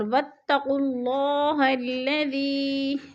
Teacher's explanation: مد منفصل 4 الفی مد ہے، 4 الف کے برابر ہم نے اس کو کھینچ کر پڑھنا ہے